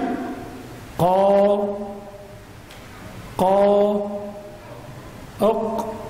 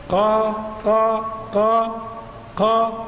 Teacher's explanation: القاف مخرجه من اقصى اللسان وما يحاذيه من الحنك الاعلى